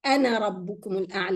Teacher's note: This madda is dropped when you continue, and if you stop on ana, then you bring it. You say ana, but if you continue, it's anara, as if it's not there.